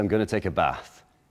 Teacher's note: in Lancashire they speak with the short a in their voice so I don't say I'm I'm going to take a bath